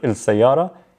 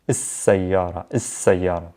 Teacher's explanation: a sun letter is a letter where I would have to skip the L sound and double down on that first sun letter. So instead of il sayara, is sayara, is sayara.